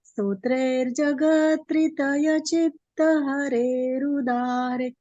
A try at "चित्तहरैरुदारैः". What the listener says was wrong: ये जो जहाँ पे बड़े की मात्रा है ना, नाथे, चित्त हरे रुदारे, उसमें आगे थोड़ी सी ह की ध्वनि आनी चाहिए। चित्त हरे रुदारे, विसर्ग है ना आखिर में। हाँ, उदारे। ऐसे जहाँ पे इस तरह के शब्द हो, नाथे, सुरलोक नाथे, तो हल्का सा आखिर में, पूरा ह नहीं, बस एक जैसे सांस छोड़ने में ह निकलता है, वो ध्वनि आनी